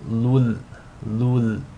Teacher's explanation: You want to assimilate the tanween into the lam without any nasal sound. So it's as if the tanween is dropped and you're just saying lul, lul. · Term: idgham bila ghunna